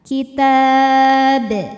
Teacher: Karena huruf qalqalah ini sukun dan sukunnya itu karena berhenti, maka dibaca dipantulkan dengan pantulan yang besar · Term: qalqalah kubro